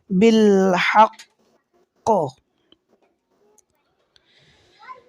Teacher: দ্বিতীয় কাফেফর কারণে কলকলা হবে এজন্য আওয়াজটাকে কিছু সময় ধরে রাখতে হবে ডবল কলকলা প্রতিধ্বনি উচ্চারণ করতে হবে বিলক ইল্লাজিনালহাতি আবারো বলছি ইল্লাজিনালহাতি